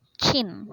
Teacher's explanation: produced with the blade of the tongue near the hard palate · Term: palatal sounds